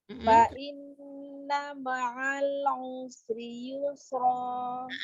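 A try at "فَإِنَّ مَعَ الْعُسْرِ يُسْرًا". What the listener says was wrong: Lam sukunnya kurang tawasud.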